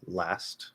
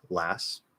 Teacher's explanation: So even in a word like last, right, where we normally we'll just drop the T in the ST ending, which will just disappear. Or it can come out as a weak T, last, or it can maybe be held, last.